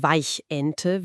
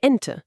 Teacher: Da ist ein kleiner Schlag am Anfang. · dann lassen wir die Luft nicht einfach fließen. Wir verschließen unseren Hals für eine Millisekunde, wir stoppen die Luft